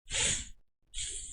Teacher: el ceceo, que é quando eles falam com a língua entre os dentes